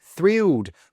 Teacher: there's a TH at the start, so make sure you pronounce that correctly instead of saying trilled, trilled with just a T sound